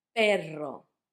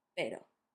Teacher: You would try to make that R a bit harder with perro when you mean a dog than when you mean pero. Just know that when you want the R to sound strong, to sound rolled between two vowels, you put double R. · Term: rolled R